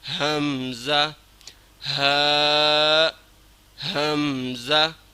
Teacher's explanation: حمزہ، حمزہ اور ہا کا مخرج ایک ہی ہے، دونوں حروف حلقی میں سے ہے اور ادنائے حلق سے ہے، سینے کی طرف سے ادا کرنا ہے،